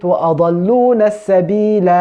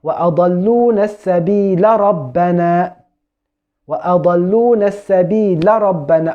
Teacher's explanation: I didn't prolong the alif because I connected the words together. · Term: silent letter